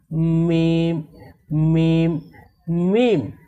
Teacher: মিম হরফকেও দুই ঠোঁট থেকে পড়তে হয়। এই মিম হরফকে দুই ঠোঁটের শুকনো অংশ থেকে পড়তে হয়। যেমন মিম মিম মিম।